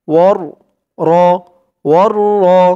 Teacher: ওয়াও দিয়ে এই তাসদীদ ওয়ালা র কে ধরবে, মাঝখানে আলিফ লাম দুইটি অক্ষর বাদ যাবে।